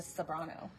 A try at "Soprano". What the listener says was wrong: It sounded like I think you said a B, but it's okay.